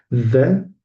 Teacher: talaffuz etilganda til uchi tishlar orasida